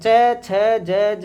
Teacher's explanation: इनका उच्चारण स्थान तालु होता है।